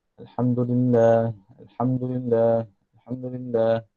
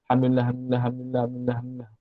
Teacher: Maka mesti baca ha tu dengan tebal, dengan ha bulat.